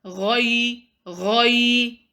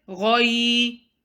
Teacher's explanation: Make your ghain in the last word heavy.